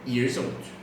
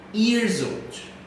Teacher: Então com years old, a gente pronuncia years old. Quase que tem um som de Z aí juntando as duas.